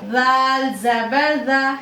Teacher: दाल भी हुरूफ मुस्तफीला में से है, बारीक पढ़ा जाएगा, और दाल में नरमी की सिफत भी है, नर्म पढ़ेंगे दाल को।